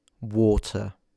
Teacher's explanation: So as you notice I don't pronounce the R at the end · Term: nonroticism